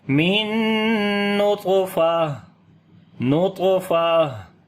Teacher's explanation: پڑھیں گے اور قلقلہ بھی کریں گے، کمزور قلقلہ ہوگا اور جب رکیں گے تو تا ہا بن جائے گی اور 2 زیر بھی ختم ہو جائیں گی ، ہا کے اوپر صفت ہمس کریں گے، من نطفہ، نطفہ،